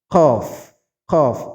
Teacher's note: keluar kalau madkhal masuk jadi jangan disedot harusnya keluar Q Q posisinya ada di Pangkal lidah bertemu dengan langit-langitnya · qf itu makhrajnya ada di Pangkal lidah dia sudah mendekati tenggorokan pangkal lidah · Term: huruf qaf